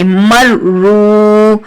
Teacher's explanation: रॉ के ऊपर तशदीद है, 2 बार पढ़ेंगे और सख्ती और जमाओ से